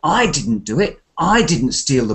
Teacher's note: you have to probably stress the first word I because it's not me